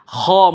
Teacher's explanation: খ গলার আপনার শেষ অংশ হইতে এই খ উচ্চারণ হয়।